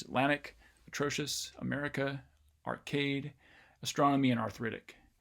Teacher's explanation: there is stress on the second syllable of each one of these